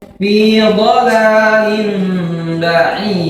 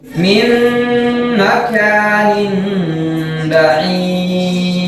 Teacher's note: maka cara bacanya dia diubah menjadi mim dengan gunnah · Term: iklab